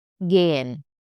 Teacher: then it should be stretched on vowel and H goes a little bit silent